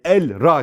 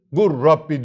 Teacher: lam ortadan kaldırdık Şedde verdik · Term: mütekaribeyn